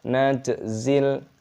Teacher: panjang ada tanda khas seperti ini gazzaniga najzil timnya berharakat sukun dibaca mati juga di Qalqalah dipantulkan suaranya najzil zatnya disini meskipun ada Ya Sukun Jangan dibaca Mad ataupun · Kadzalika najzil, jimnya berharokat sukun dibaca mati, dikolkolah, dipantulkan suaranya. najzil.